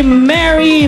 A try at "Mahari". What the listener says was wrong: the name is Mahari.